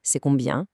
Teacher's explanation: C'est combien is structurally just a regular statement, like it is how much, but that rising pitch magically turns it into a question